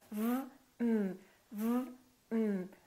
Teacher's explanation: So first, my lower lip is touching my upper teeth.